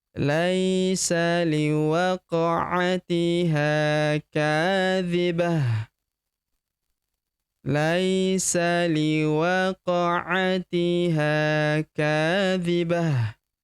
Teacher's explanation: Ta marbutah di ujung berubah menjadi ha sukun